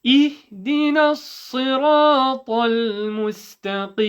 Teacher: Okay, and don't say إح. No qalqala, no echo on the ha sukun.